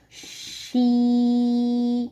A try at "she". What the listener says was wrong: No, you have to say fast.